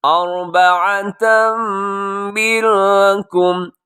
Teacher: یہاں پہ ادغام ہے غنے کے ساتھ تنوین کے بعد میم کی وجہ سے